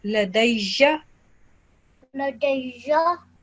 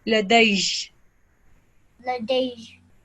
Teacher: when we're taking a pause, we're going to ignore the fatha and we're going to change it into sukoon. So if we were not pausing, we would read it as ladayja.